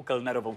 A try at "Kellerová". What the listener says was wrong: Pro mě, Aleši, já tě nechci nějak opravovat výrazně, ale tam nešlo o jméno Kellner, ale Keller, Kellerová. Doktorka Kellerová.